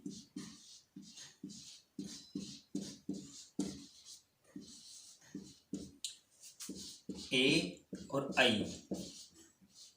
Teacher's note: ए और आई, इनका उच्चारण स्थान, इनका उच्चारण कंठ तालु के द्वारा होता है।